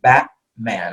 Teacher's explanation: Well, especially in American English, all right, when we have a T in between, after following a vowel, okay, or in this case, following a vowel and before a consonant, we would pronounce it Batman, all right? I'm not saying a T. I'm using something called a glottal stop, okay? It's this little symbol here that looks kind of like a question mark.